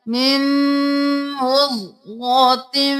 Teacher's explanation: من نہیں کرنا، میم کو میم کے ساتھ ملانا ہے، غنہ بھی کرنا ہے